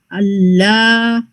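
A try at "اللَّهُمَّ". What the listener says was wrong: نہیں پورا پورا پڑھیں گے اللہم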